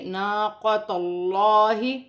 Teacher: تا کو لام کے ساتھ ملا کر پڑھا جائے گا، تا پر بھی زبر ہے، اللہ کی لام سے پہلے زبر آ رہی ہے، زبر اور پیش آئے گی تو وہ لام اللہ کی لام موٹی پڑھی جائے گی